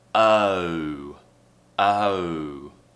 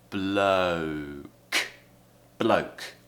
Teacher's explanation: So we have schwa, and then oo. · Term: diphthong